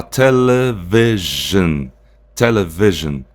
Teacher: Aí você lembra que a gente falou do I, que esse I aqui em inglês, o I curto, ele tem um som mais aberto. Não seria um I fechado, seria um E